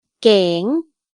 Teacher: Il y a un signe de tonalité, c'est le mai chatawa, donc le ton est montant.